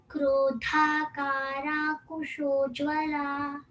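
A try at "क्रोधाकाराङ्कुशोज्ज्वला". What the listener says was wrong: I don't hear the ng sound. Krodhakarang Kusha. Krodhakarang Kushojjvala. Krodha.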